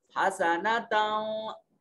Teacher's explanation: मन यक़ूलु, और फिर आगे देखिए जी हसनतम, ता के ऊपर तनवीन है, ता मुनव्वन है और उसके बाद हुरूफ यरमलून में से वाव है, इदगाम बिलगुन्ना होगा। हसनतम, आवाज को नाक में ले जाएंगे।